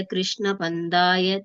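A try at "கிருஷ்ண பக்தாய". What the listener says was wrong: பந்தாய கிடையாது இதுவும் ப்தாயதான்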